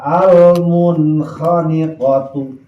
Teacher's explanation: Jadi lamun aya nun sukun atawa tanwin ngahareupan kha, maka nun sukun sareng tanwin macana wajib izhar suara n. Izharna izhar halqi lantaran kha eta huruf halak.